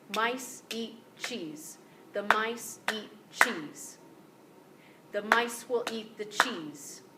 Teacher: what you can hear is that I'm not changing the beats mice eat cheese gets exactly the same amount of emphasis because they're nouns and verbs but all those other sounds they get just kind of stuffed in there and they're very brief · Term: stress nouns and verbs